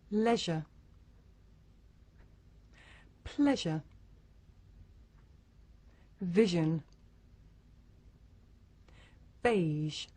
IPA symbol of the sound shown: ʒ